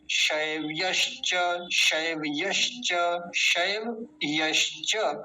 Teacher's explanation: य का विशेष ध्यान रखेंगे क्योंकि इसको बोलने में कई बार य गायब हो जाता है, शैवश्च ऐसे बोल देते हैं लोग, ये गलत है।